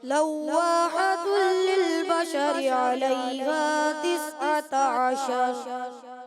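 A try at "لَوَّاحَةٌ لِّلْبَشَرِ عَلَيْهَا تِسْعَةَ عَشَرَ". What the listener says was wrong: تسعۃ کا عین تھوڑا کمزور ہوتا ہے، اس کو آپ نے کلیئر کرنا ہے اور للبشری کی را کو باریک کرنا ہے، ٹھیک ہے. لواحۃ للبشر علیہا 19. جہاں را باریک کرنا ہے باریک، پور کرنا ہے پور، اس چیز کو سمجھنا ہے، ٹھیک ہے.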